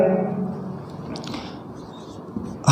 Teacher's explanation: हा जो व्यंजन है ये काकल्ली है, यानी गले में काकल्ली से इसका उच्चारण होता है, स्वर यंत्री से होता है। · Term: काकल्य